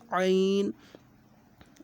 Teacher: الف کی آواز الگ ہوتی ہے، عین کی آواز الگ ہوتی ہے، دونوں میں فرق کر کے پڑھیں۔ عین، عین حلق سے نکالنی ہے آواز، عین حلق پر زور لگانا ہے،